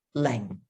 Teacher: our low falling fourth tone